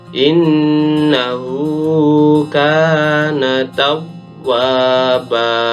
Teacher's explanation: Huruf kafnya dibaca panjang 1 alif atau 2 harokat karena masuk bacaan mad tabi'i. Huruf kafnya berharokat fathah, kemudian diikuti alif setelahnya.